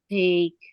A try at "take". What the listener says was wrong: Ya, take.